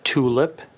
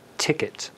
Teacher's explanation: For example, if you were to say the word tulip versus the word ticket, watch what your lips do when you say tulip. You start to anticipatorily round your lips during the T in anticipation of the vowel coming behind it.